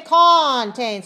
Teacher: Very small first syllable, very weak.